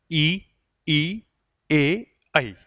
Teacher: इन चारों स्वर का उच्चारण करते तो जीवा का आगे वाला भाग हिलता है। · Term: अग्र स्वर